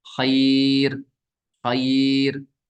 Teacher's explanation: तो अब क्या बनेगा, रॉ साकिन से पहले या साकिन आ गया, तो वक्त की सूरत में, ठहरने की सूरत में हम इस रॉ को बारीक पढ़ेंगे